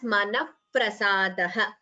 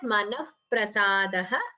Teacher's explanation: So here visarga followed by pa upadhmaniya.